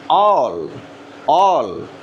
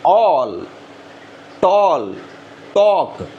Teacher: ఆల్ fully rounded. Lips ఎప్పుడు touch అవ్వవు కానీ రౌండ్ పొజిషన్లోకి వస్తాయి.